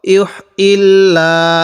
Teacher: এখানে যদি লামটাকে মোটা করে পড়ি তাহলে শুদ্ধ হবে না, কারণ আল্লাহ শব্দের এই যে লাম আছে এই লামের পূর্বে যখন আমরা জের দেখব তখন আমরা এই লামটিকে বারিক করে পড়ব, অর্থাৎ তখন এই লামটিকে চিকন করে পড়ব।